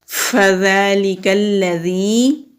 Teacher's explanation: ذال کے اوپر کھڑی زبر ہے، کھڑی زبر کو ایک الف کے برابر کھینچ کر پڑھتے ہیں